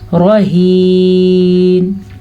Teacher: ہا حلق کے آخری حصے سے نکلتا ہے, اس کو وہیں سے ہی نکالنا ہے